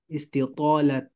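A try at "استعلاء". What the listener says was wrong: আচ্ছা ইস্তিতলাত না বলে ইস্তিতলাহ বলবো আমরা, এখানে গুলতে হবে, হ্যাঁ।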